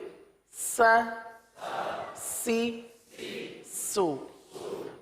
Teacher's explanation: سین میں سیٹی کی آواز نکلتی ہے